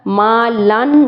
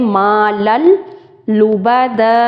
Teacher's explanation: आखिर में नून साकिन की आवाज़ नहीं आएगी, इदगाम करेंगे